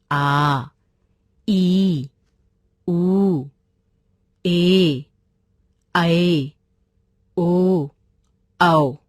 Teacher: जिन स्वरों के उच्चारण में ह्रस्व स्वर से दुगना समय लगता है उन्हें दीर्घ स्वर कहते हैं